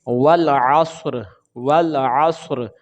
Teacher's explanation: آواز آئے گی، را کو تکرار کے ساتھ پڑھا جاتا ہے، را کی آواز آئے گی اور را کو ساکن کر دیں گے، را کے نیچے یہ جو زیر ہے یہ نہیں پڑھیں گے